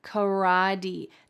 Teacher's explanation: That final T changed to a D sound. This is exceedingly typical in American English when there is a T surrounded by vowel sounds, it's going to change into a D sound.